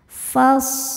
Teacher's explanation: Nah ini alifnya tuh bukan pemanjang ya, bukan huruf mad melainkan hamzah wasol. Hamzah wasol jika di tengah tidak dibaca maka fa tetap pendek.